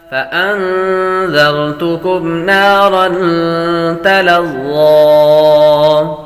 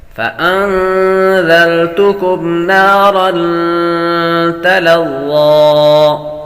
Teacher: نون پر غنہ کریں گے، دال کو نرمی کے ساتھ پڑھیں گے